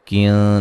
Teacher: نون ساکن کا اخفا ہے باریک